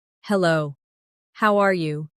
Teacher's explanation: Notice how the tone goes slightly up at the end, showing you're asking a question.